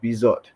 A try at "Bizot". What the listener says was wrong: French. You don't pronounce the T.